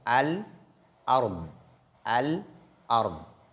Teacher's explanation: Là, la lettre Lam, elle est lue. Et la lettre Hamza aussi est lue.